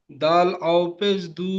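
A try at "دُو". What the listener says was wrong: তাহলে টান দেন, দাল ও পেশ দু।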